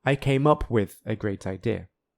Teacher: The 2 particles, up and with, are both stressed.